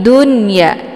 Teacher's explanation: dunya jelas bunyi n disebut dengan izhar mamnu ya. Kemudian untuk ya-nya dibaca panjang dua harakat.